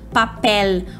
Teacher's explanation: nunca o l no final de palavra vai ter som de oh como a gente costuma fazer em português